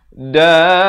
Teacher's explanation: Da itu dipanjangkan 6 harakat.